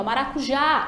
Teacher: identificamos que a sílaba tônica é a última, né? Começando dali do já. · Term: oxítona